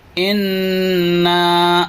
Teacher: یہاں پہ غنہ کرنا ہے کیونکہ نون کے اوپر تشدید ہے، اور جب بھی نون میں یا میم میں تشدید ہو تو غنہ کرتے ہیں، لہذا یہاں پر غنہ کرنا ہے۔